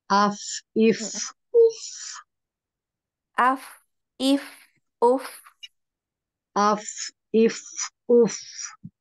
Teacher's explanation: bagian yang ini bertemu dengan ujung gigi seri atas jadi ee bibir bawah yang bagian dalam yang basahnya ya dia bertemu dengan ujung gigi seri atas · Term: huruf Fa